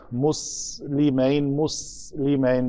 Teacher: سین کا مخرج ہے کہ دونوں دانت جڑتے ہیں تو پیچھے سے زبان آ کے ٹکراتی ہے تو ایک سیٹی کی آواز پیدا ہوتی ہے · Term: حروف صفیریہ